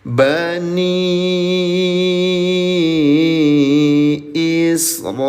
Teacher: panjangkan selama lima harakat atau diketuk lima kali